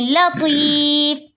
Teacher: حرف مدہ کے بعد میم کا سکون عارضی آ رہا ہے تو یہاں پہ مد عارض وفی بنے گی، جسے ہم 3 الف کے برابر کھینچ کر پڑھیں گے